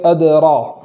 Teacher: اور را کو پور پڑھیں گے، اور پور کرنے میں ہونٹوں کا سہارا نہیں لیں گے